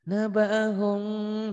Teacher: Yang bawah ada engnya. Kenapa ke eng? Karena ihfa syafawi ke hidung gitu. Nabahum tuh.